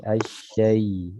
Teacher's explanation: Yang sering terjadi kesalahan adalah pada huruf asyaiton. Ada ya sukun, ya, sebelumnya fathah, ini condong kepada suara i, asyai, bukan asyai.